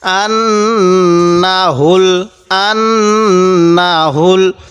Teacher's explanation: নুনের উপর তাজদিদ থাকার কারণে এখানে আমি গুণনা করছি। নুন জবর না, আন না, হা লাগবে এই লামের সাথে হুল, আন না হুল, আন না হুল, এই নুনের মধ্যে কিন্তু টান দিব না।